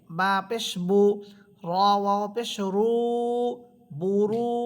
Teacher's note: পেশের পর ওয়াও সাকিন হলেও একালিফ করে টেনে পড়তে হয়।